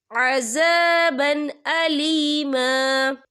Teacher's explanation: ये देखिए अज़ाबन, बा के पर तनवीन है, तनवीन के बाद जो है हमजा आ रहा है और हमजा जो है हरूफ हल्की का वर्ड है, तो हम यहाँ इजहार करेंगे, हम इसे बिना गुन्ने के पढ़ेंगे।